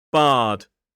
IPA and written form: bɑːd (bard)